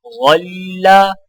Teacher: غا کی آواز موٹی اور نرم ہوتی ہے